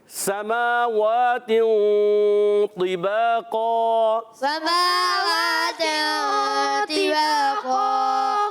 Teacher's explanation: سماوات، یہاں اخفاء کا قاعدہ ہو گیا، کیونکہ اخفاء اس لیے کہ تنوین کے بعد حرف اخفاء میں سے طا آ رہا ہے، تو اخفاء کریں گے یعنی غنہ کریں گے، ناک میں آواز لے جائیں گے مگر نون کو چھپائیں گے، نون کو ظاہر نہیں کریں گے، چھپا کر ادا کریں گے۔ · طا حرف متوقع میں سے ہے، موٹا حرف مستعلیہ میں بھی ہے، ایکسٹرا موٹے حروف میں سے بھی ہے، با زبر با علی مدہ ہے، اور قاف پر دو زبر کی تنوین، قاف موٹا بھی رکھنا ہے، اور اس کے بعد جو دو زبر کی تنوین الف سے بدلتی ہے الف بھی موٹا ہو جائے گا، تو آواز آئے گی سماوات طباقا۔ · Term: وقف بالابدال مع الالف